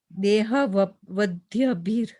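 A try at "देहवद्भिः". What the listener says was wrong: No, this is not Vadhya. Dehavadbhir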